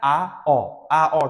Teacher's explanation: Quyi keng esa a o deganimizda jag' pastga tushadi. Shuning uchun quyi keng deyiladi.